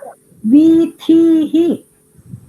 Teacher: ಎರಡು ವೀನು ದೀರ್ಘ, ಥೀಹಿನು ದೀರ್ಘ, ದೆನ್ ವಿಸರ್ಗ.